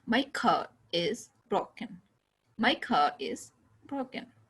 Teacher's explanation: R कहीं पर touch नहीं किया